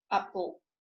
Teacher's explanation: There is a lateral closure in the vicinity of l, as in apple.